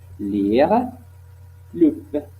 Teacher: Aussi, nous avons alvéolaire latéral, la pointe de la langue, comme près les alvéoles, la passer sur les côtes de la langue, comme les sons L, constrictive, latérale, apico-alvéolaire, sonore